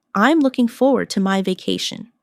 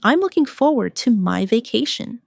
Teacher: Notice the smooth connection between looking and forward.